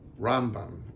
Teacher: The Rambam is supposed to be pronounced with the accent on the first syllable.